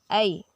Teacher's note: दो अलग अलग ध्वनि निकल रहे हैं, अ और ई